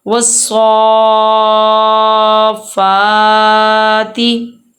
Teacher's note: جیسے سواد کے اوپر کھڑی زبر مدے کے ساتھ ہے اور فا کے اوپر کھڑی زبر ہے، اسی لیے ہم سواد اور فا کو لمبا کریں گے۔